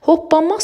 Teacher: Hoppanmaq sözündə ikinci kar samit öz cingiltili qarşılığına keçir. N samiti ondan sonra M samiti gəldiyi üçün M-ya keçdi.